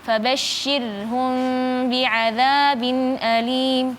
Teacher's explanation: Huruf syinya eh tipis, rnya juga tipis.